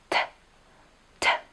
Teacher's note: T vzniká vypustením vzduchu pričom špička jazyka sa dotýka alveolárneho hrebeňa teda ďasna ktoré máte tesne za hornými zubami